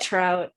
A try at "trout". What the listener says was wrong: one thing that i noticed about trout was that you roll the r which is not something you